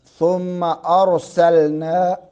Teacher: را ساکن ہے، ما قبل فتح ہے، زبر ہے، اس لیے ہم اس را کو پر کر کے پڑھیں گے